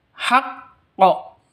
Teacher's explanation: ini cara bacanya haqqo seperti itu jadi dipantulkan ke huruf qnya qofnya dipantulkan ke huruf qalqalahnya